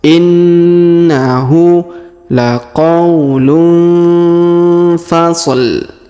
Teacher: huruf nun sukun tanwin un bertemu fa, maka didengungkan dan disamarkan ya. Cara bacanya didengungkan dan disamarkan.